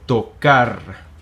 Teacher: at the end we trill this R. It's not as pronounced as it would be at the beginning, or if it's a double R in the middle.